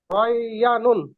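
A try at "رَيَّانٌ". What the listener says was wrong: হ্যাঁ, ইয়া একটু টান হবে, রয়ানুন।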